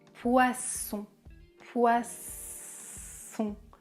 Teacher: Le son est sourd, comme un serpent.